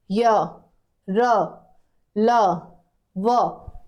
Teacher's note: कोई गले पर हाथ लगा के बोल य आवाज पूरी काप जाएगी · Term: अंतस्थ व्यंजन